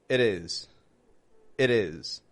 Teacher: D. It's not a strong D as in D, dad. It's actually a rather soft one. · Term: flap T